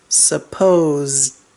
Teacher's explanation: That S is making a Z sound.